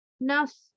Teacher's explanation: صاد جو ہے موٹا حروفوں میں سے ہے، نص اس کو صاد کا موٹا پڑھنا ہے۔